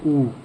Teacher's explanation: ऊ पे आपका मुंह एकदम से आगे सिकुड़ता जा रहा है।